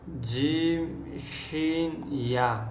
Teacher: जीम शीन या ज़बान के दरमियान और ऊपर के तालु के दरमियान से ये तीन हरूफ अदा होते हैं. यानी ज़बान का दरमियानी हिस्सा और ऊपर जो तालु है उसके भी दरमियान से जीम शीन या अदा होते हैं